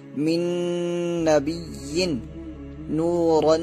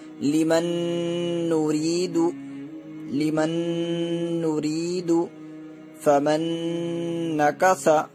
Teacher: ادغام باغنہ ہوگا یعنی ناک میں آواز کو ایک الف کے برابر چھپائیں گے